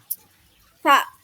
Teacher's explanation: meletakkan ujung lidah antara gigi atas dan gigi bawah dengan berbentuk suara yang terhembus. Hembusan udara yang lewat dengan sempit keluar akibat gesekan.